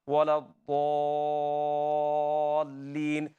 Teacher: The root of your molars, they touch. Your tongue rises and touches the root of your molars on the left side, and you pronounce it with full mouth. · They are same makhraj. Dad is from side of your tongue.